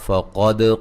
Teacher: قاف کو موٹا, دال پہ قلقلہ.